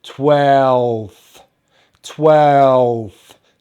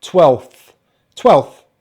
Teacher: the number 12 has a v sound at the end so the v sound we make by putting the top of the row of teeth on the bottom lip but also using our voice box to make some vibration but